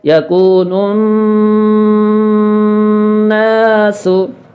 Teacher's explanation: شد والے نون کے ساتھ ملاتے ہوئے کچھ دیر ناک میں آواز کو گنگنانا ہے، جس کو گننا کہا جاتا ہے، اس سے آواز میں خوبصورتی پیدا ہوتی ہے، یہ تجوید کا ایک اصول ہے۔